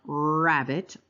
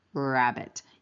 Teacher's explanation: Do you do a retroflex R where the tip of your tongue comes up and back and then down, rabbit, or do you keep your tongue tip down and just bunch your tongue, rabbit? Either way you can get to that production.